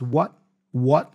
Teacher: the T for what here he doesn't pronounce so he drops that